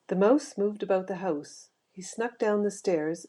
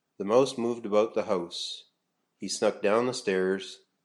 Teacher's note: Canadian speakers to pronounce diff thongs like Al and I by starting the vowel sound a little bit higher in the mouth closer to the older pronunciations found in early modern English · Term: Canadian raising